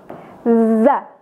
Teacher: Huruf za tepatnya keluar dari ujung lidah, ditempelkan gigi seri bagian bawah tanpa mendesis